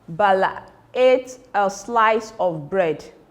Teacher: The emphatic stress is where you usually have the capital letter and this is where the emphasis is on. The emphasis is on bread.